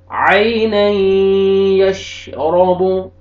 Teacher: را کو مرفتح ہے، را کو موٹا کر کے پڑھیں گے